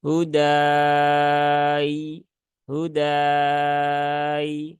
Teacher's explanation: Padahal di sini kan Arid lukun ya Mad Arid l suukun berarti ya madnya dipanjangkan ya-nya disukunkan ya misal kita menggunakan empat harakat